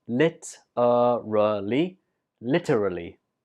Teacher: literally this word has four syllables lit a really literally and the stress is on the first syllable